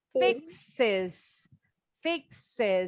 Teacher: Fixes, ingat X itu bunyinya KS. Kalau pakai S, bunyi final S-nya jadi is.